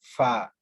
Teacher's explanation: جو ثنایا علیا ہے وہ نیچے والے ہونٹ کے گیلی سائڈ یعنی کہ اندر والی سائڈ، تر سائڈ سے ملیں گے، تب یہ حرف ادا ہوگا فا۔